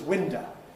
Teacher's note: instead of an [əʊ] at the end, you get a schwa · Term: weakening, special weakening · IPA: ˈwɪndə, [ˈwɪndə]